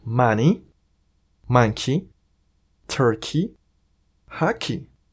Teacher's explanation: Cuando tengamos en inglés palabras que terminen en EY, haremos ese sonido como si fuese una I latina.